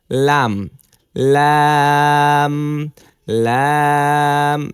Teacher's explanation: লাম লাম আপনি লাম উচ্চারণ করুন লাম উচ্চারণ করলে দেখবেন আপনার জিহ্বার আগার কিনারাটা এটা অটোমেটিক উপরের এই দাঁতের গোড়ার সাথে যেয়ে লাগছে